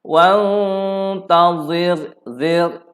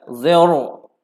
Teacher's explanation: Nipis, sebab sebelum ra sukun, sebelumnya baris bawah kita baca nipis